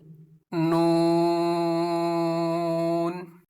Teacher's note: हैं जबान का किनारा इसमें भी जुबान का किनारा इस्तेमाल होगा जुबान का किनारा और अनिया से सनाया तक के दांतों की जड़ों से अदा होता है · जुबान का किनारा ऊपर लगाएंगे दांतों की जड़ों पर छह दांतों की जड़ों पर